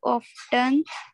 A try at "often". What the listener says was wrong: इसमें टी silent रहता है ऑफन, इसको जो हम पढ़ते हैं ना.